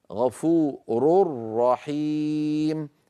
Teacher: بعد الراء المضمومه من كلمه غفور نشدد الراء التي في رحيم لان الراء الراء المشدده اصلها تنوين ادغم ال في الراء من · ما قلناه عن النون ينطبق على التنوين، ونرى مثال أمامنا غفور رحيم، غفور رحيم، تنوين بعده راء، فإذا أدغمنا التنوين في الراء التي بعده يصبح النطق هكذا كما نرى الآن على اللوحة غفور رحيم. بعد الراء المضمومة من كلمة غفور نشدد الراء التي في رحيم، لأن الراء المشددة أصلها تنوين أدغم في الراء من رحيم، غفور رحيم، ولا يبقى من النون شيء.